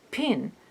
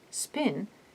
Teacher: If you put two fingers in front of your mouth and pronounce pin and spin, you will notice that in the first case, pin, there is a puff of air at the p sound that is not present in the case of spin. This puff of air, called aspiration, is what the superscripted H-shape symbol means.